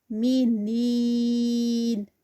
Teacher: نین میں بھی یا مدہ، اور یہ 4 کاؤنٹس کا اسٹریچ ہوگا یہاں پر